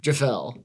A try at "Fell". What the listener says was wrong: Don't say the G. Just like you don't say the P in pneumonia.